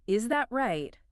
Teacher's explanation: your voice goes down hard at the end. It sounds aggressive. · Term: sharp falling tone